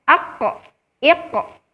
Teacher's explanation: ketika mengucapkan huruf qaf berharokat sukun, maka adanya pantulan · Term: qalqalah